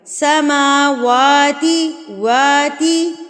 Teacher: سما میم کے اوپر کھڑی زبر، واو کے اوپر کھڑی زبر، تو اس کو ہم نے ایک ایک حرکت کے برابر کھینچنا ہے